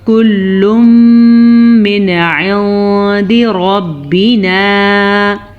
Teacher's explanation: کل من، ساتھ ہی آگے اخفا کا قاعدہ آ رہا ہے کیونکہ یہاں پہ نون ساکن کے بعد دال حروف اخفا میں سے ہے، تو ہم نے اس کو چھپا کے غنے کے ساتھ پڑھنا ہے